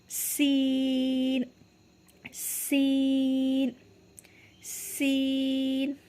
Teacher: दोनों दांत हम मीचेंगे, बंद करेंगे, यानी आवाज़ इस तरीके से, जैसे सीटी बजती है सीन, और जैसे सीन की सीटी की आवाज़ लगा के होठ जो है अपने दांत जो हैं वो खोल लेंगे, सीन है।